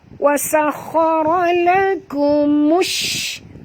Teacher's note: Bunyikan tafashi pada huruf shim ya. Bunyi angin yang berhamburan. · masukkan bunyi mim itu terus ke dalam shim